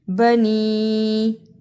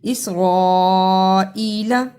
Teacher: بنی چھوٹی مد، اسرائیل بڑی مد کو ادا کیا